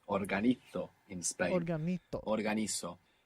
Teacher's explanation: Z there is going to be pronounced th. Organizo in Spain.